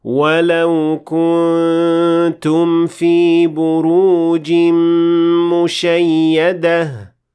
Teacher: That's right, the noon in the word kuntum, which is an indication that the noon will not be fully pronounced in this case because of ikhfa